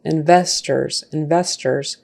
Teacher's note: And that ORS, a lot of times in English, that final syllable, if it's unstressed, and it is because we're putting our stress on the second syllable